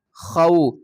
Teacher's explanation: یہ حروف لین ہے، اس کو ہم تھوڑا سا جلدی اور نرمی کے ساتھ ادا کریں گے۔ خا واو زبر خو، فا 2 زیر فن، خوفن، آگے وقف کریں گے، وقف کی صورت میں ہم 2 زیر کو جزم میں تبدیل کریں گے، اس حرف کو ہم ساکن پڑھیں گے، خوف خوف۔